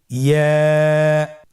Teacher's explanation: ইয়া উচ্চারিত হয় জিহ্বার মধ্যখান তার বরাবর উপরে তালুর সঙ্গে লাগিয়ে উচ্চারিত হয়। আমরা জিহ্বার মধ্যখানটাকে উপরে তালুর সঙ্গে লাগিয়ে উচ্চারণ করি ইয়া। আবার বলুন ইয়া।